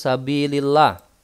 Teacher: Kemudian hukumnya tarkik. dibaca tipis karena sebelumnya harakatnya berharakat kasrah